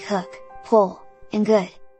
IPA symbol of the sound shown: ʊ